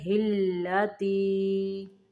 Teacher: ہا کو لام کے اندر ملائیں گے، ہلتی، زینت اللہ التی، ہاں کو لام کے اندر ملائیں گے، ہلتی۔